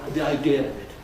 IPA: ði aɪˋdɪə əv ɪt